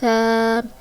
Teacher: سا کو ادا کرتے وقت سیٹی کی آواز نہیں آنی چاہیے. سا کی ادائیگی بھی جب زبان کی نوک اوپر والے سامنے والے 2 دانتوں کے کناروں سے لگے گی تو سا ادا ہوگا.